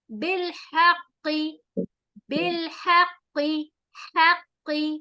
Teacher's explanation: بالحق، بالحق، حق، ہا حروف حلقی ہے، حلق کے بیچ والے حصے سے اس کو ادا کریں گے